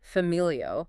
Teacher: the stress is on the second to last vowel